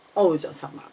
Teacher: Please notice that the O is high and U is low of OU in the Oujyosama.